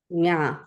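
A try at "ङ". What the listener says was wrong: Nga. So if you say sing, that last sound, nga. Because you want to make sure that it doesn't sound too much like this one, which is nya.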